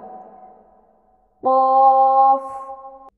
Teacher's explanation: আমরা যদি কফের মাখরাজটা দেখি সেক্ষেত্রে আমরা জানি যে জিহ্বার গোড়া, অর্থাৎ আমাদের যে জিহ্বার গোড়া আছে তার বরাবর উপরের যে অংশ, সেখান থেকে লেগে আমাদের কফ উচ্চারণ হয়